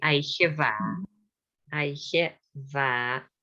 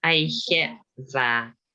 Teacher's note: So DH is not pronounced. It's in the middle of the word, so it's not pronounced.